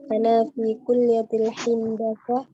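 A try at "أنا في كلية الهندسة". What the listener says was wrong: Handasa ya, bukan hindasa. Coba diulang.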